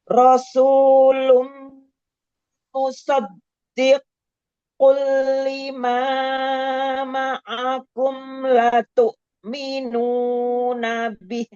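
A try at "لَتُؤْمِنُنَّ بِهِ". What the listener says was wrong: Itu 5, jangan kepanjangan. Matobi'nya 2 harokat aja.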